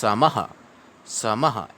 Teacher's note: समः शत्रौ, सम उसके बाद में विसर्ग है, तो यहाँ पर विसर्ग को ह पढ़ेंगे थोड़ा फास्ट गति से